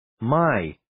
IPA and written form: maɪ (My)